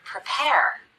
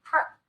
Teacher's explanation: the first syllable of the word prepare is the unstressed syllable we cut the vowel we rush through it as quickly as we can